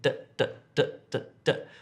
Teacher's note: Apparently you have a sound where your tongue hits the front teeth and you say d